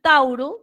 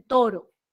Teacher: El diptongo AU va a cambiar a la O